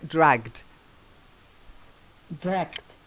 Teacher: Now, it's not t, it's the d. Dragged. It's got the duller sound. T is too sharp. So it's got the dull d.